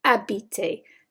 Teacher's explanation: We don't pronounce the H. So we treat that like a vowel in French.